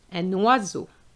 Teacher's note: you need to make the liaison, which is a compulsory one between the un and the o